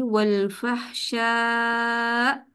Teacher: इस पर आवाज ऊंची करनी है, ताकि सुनने वाले को सुनाई दे कि यहाँ पर आखिरी लेटर हमजा है। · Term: हमजा साकिना